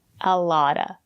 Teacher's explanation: the letter T is between vowels. We pronounce it as a fast D.